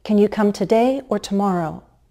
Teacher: rising and then falling I'm only presenting two Alternatives and I expect you to choose one of them